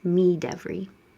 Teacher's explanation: This T will change to a D because it's between two voiced sounds.